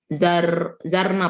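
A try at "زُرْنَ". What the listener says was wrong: Nah, ada kekeliruan harakat. Zurna. Bukan zarna.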